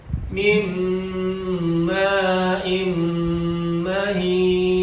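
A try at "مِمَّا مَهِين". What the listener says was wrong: Imnya kurang. Maknya kurang panjang.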